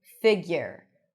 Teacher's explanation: So you can add a little y sound there, but there is no oo, even though there is the letter u.